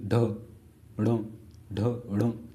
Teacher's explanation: झटके से आपकी जो है जो जीभ है वो बाहर आती है, जैसे बोलिए ढ ढ ढ, तो एकदम झटके से बाहर आती है, तो इसीलिए हम उसको बोलते हैं अक्षिप्त व्यंजन, ठीक है, द्विगुण व्यंजन बोलते हैं।